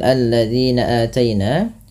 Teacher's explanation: Kemudian pada lafal zinah ada mad thabi'i dan hati-hati dalam melafalkan huruf dalalnya jangan terubah menjadi huruf zai